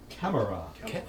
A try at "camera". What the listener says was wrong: There's 3 syllables.